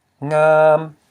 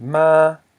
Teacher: Low consonant plus a live syllable equals a high tone.